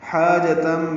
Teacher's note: حاجتم میں حا الف مدہ ہے، وسط حلق سے ادا کریں گے